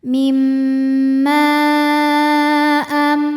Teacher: Hamzah nya a terdapat pada kata amsakna ke kata kedua. Maka huruf mim kita panjangkan boleh empat boleh lima harakat. · Maka huruf mim kita panjangkan boleh 4 boleh 5 harokat. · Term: mad jaiz munfashil